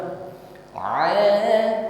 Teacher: diawali dengan huruf Ain ya Ada terasa tekanan di wasatulqi tenggorokan bagian tengah suaranya lunak saja